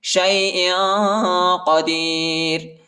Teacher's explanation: علی کل شیء قدیر، ادھر اخفاء کریں گے اور را کو باریک پڑھیں گے، ٹھیک ہے، موٹا نہیں پڑھیں گے